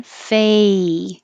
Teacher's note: So your tongue is starting in a lower position, fay, and rising and ending with E.